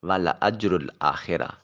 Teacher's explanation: لام کو لمبا نہیں کریں گے، معنی الٹ ہو جائے گا